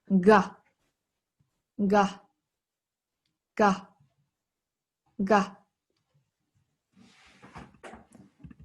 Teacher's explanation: it's with a stronger vibration from the throat